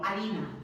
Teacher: La H en castellano no representa ningún fonema. La H en castellano la escribimos, pero la H no la pronunciamos.